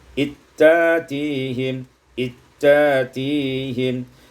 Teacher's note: diidghamkan zal pada ta, summa ibdalul hamzati alifan, kemudian ditukar hamzah dengan alif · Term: idghamul zal fit ta